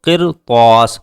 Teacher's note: قرطاس میں را سے پہلے زیر ہے، لیکن را کے فوراً بعد اسی ورڈ میں، اسی کلمے میں پر لفظ آ رہا ہے جس کی وجہ سے ہم را کو پر کریں گے